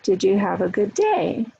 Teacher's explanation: Rising intonation on a closed question